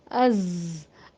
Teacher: آپ کو تھوڑا سا ارتعاش محسوس ہوگا، وائبریشن محسوس ہوگا از کی ادائیگی میں ، اور آواز جو ہے وہ تھوڑی سی بند ہوتی ہوئی